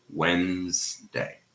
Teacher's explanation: So in Wednesday, the D disappears. The D is silent. The first D, of course, and the D, the sound is in the middle. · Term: elision